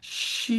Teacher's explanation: So this one's for the triple burners, and that's she, and that's all descending. She, like going down an elevator. Start high and go low. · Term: descending sound